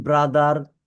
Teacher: এন্টার এই যে আমরা শেষে আর বলি এই আরটা হবে না আমেরিকাতে আর হয় আর উচ্চারণ করে কিন্তু এই ব্রিটিশে আরটা হয় না হয় আমরা ব্রিটিশটাই ফলো করব ঠিক আছে আমরা ব্রিটিশ অ্যাকসেন্টে উচ্চারণ